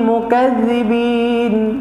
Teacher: zal ni pun jangan terlalu kuat. Kalau kita buat mukaz dia jadi zai